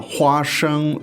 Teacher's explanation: Now, 花 生, two first tones.